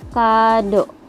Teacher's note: vokal O madia atas belakang